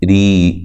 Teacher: را کو بھی باریک پڑھنا ہے، را کے نیچے زیر ہے